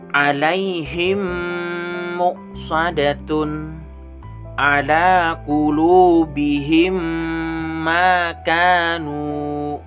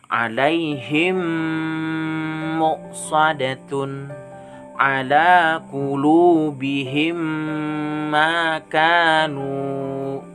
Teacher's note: mim sukun nya digabungkan dengan huruf mim nya dan dibaca berdengung jadi membacanya tuh harus berdengung ingat mim sukun nya Hai digabungkan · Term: idgham mimi